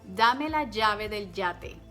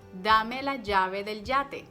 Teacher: Do you hear any difference between llave and yate? No, because there's no difference here. That's why children or people learning the language struggle a lot when it comes to recognize which letter they have to use in a dictation or in a writing, because they sound alike.